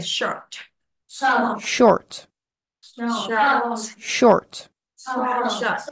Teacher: Là SH sờ hờ này là cái chữ sờ mạnh, các bạn cong lưỡi lên, có chữ R cong lưỡi, chữ T bật lưỡi lên